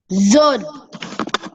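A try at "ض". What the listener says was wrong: You're sounding. It should not be sounding. Look at me. But. Wala. Bo. Wala. Bo. Bo.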